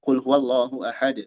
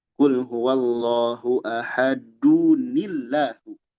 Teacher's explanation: Kalau berhenti kul huwallahu ahad. Qalqalah. Tapi kalau disambung ada nun kasroh untuk memudahkan bacaan.